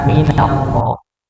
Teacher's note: Berikutnya ketika ayat yang kedua maka jangan lupa lafaz nun sebelum lafaz Allah atau sebelum lafzul jalalah itu hurufnya nun nah yang dibaca titis, bukan minallah tapi minallah untuk menipiskan huruf nun, karena kita baca bukan no tapi nah